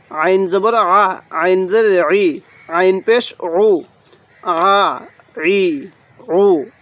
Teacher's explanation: আইনটা উচ্চারণের সময় গলার মধ্যে হালকা চাপ দিলে আইনটা সহি উচ্চারণ হবে